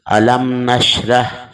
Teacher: میم ساکن کے بعد اگر حرف با اور میم کے علاوہ کوئی بھی حرف آ جائے تو اظہار شفوی ہوگا، یعنی غنہ نہیں کریں گے